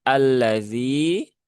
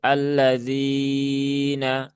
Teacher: Berarti di sini ada hukum yang namanya mad th'i atau mad ee mad asli. dibaca panjang cukup dua harakat saja